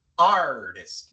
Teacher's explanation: la t viene al principio de una sílaba no acentuada porque la sílaba acentuada es la primera